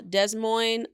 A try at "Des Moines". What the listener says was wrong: Des Moines. Des Moines. You don't pronounce the S. Des Moines.